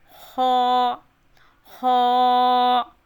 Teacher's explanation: Green colour اس قاعدے میں اس چیز کی نشاندہی کرتا ہے کہ یہ حروف موٹے کر کے پڑھے جاتے ہیں۔ خا کو موٹا کر کے پڑھیں گے